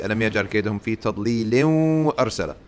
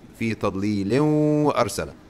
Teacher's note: you will have something called idgham, entrance directly into the next letter. The noon will disappear into the well.